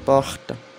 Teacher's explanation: o R na França é um R mais da garganta